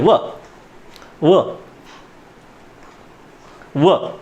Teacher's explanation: आपला खालचा ओठ, आपले वरचे दात. जागा बदलायच्या नाही, नाहीतर वेगळंच निघायचं काहीतरी. हां, दंतौष्ठ्य. हां, यांचा किंचित स्पर्श.